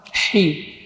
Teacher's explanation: keluar di tengah tenggorokan, huruf hamas dan rakhawah